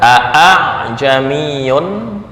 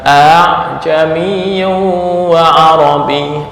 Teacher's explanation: habis sebentar [Tepuk tangan] oke lanjutkan dengan maksud meringankan Hamzah artinya suara yang keluar bukan murni Hamzah dan bukan murni Alifah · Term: tashil